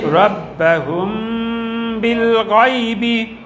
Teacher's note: এই মিমের গুণনা হচ্ছে বায়ের কারণে।